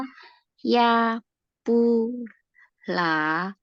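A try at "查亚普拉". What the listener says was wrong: Oh, nadanya ya. Cha ya pu la. Cha ya pu la.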